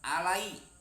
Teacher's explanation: Alai disebutnya madlain atau madlin, ya mati setelah baris fathah, yaitu madlin ini disebutnya halus. Lain lin itu halus, mad yang halus.